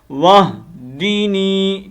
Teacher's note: واو کو ہم آگے ہا کے ساتھ کنیکٹ کریں گے، وہدینی، دینی، نون کو لمبا کرنا ہے، وہدینی، کیونکہ یا مدہ ہے نا